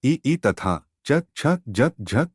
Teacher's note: वर्णों का उच्चारण तालू से होता है उन्हें तालव्य कहते हैं तालो पर जहवा के स्पर्श से यह वर्ण बोले जाते हैं स्वर वर्णों में इस श्रेणी में एव ई स्वर शामिल हैं